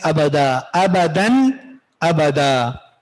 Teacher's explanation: اب اس تنوین کو چھپائیں گے نہیں، ابدا ناک میں نہیں چھپائیں گے. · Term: اظہار